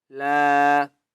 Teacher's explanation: الف مدہ ہے، لام کو ایک الف کی مقدار کھینچ کر پڑھیں گے